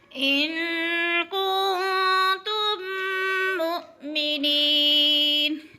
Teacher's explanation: میم ساکن کے بعد میم مشدد آ رہی ہے تو ادغام شفوی ہے، یعنی ایک میم ساکن کو میم مشدد میں مدغم کر کے پڑھیں گے